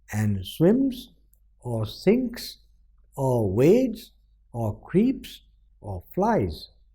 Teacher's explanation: or are the functional words are non-stressed and relatively less pressed so the dominant pattern is unstressed stressed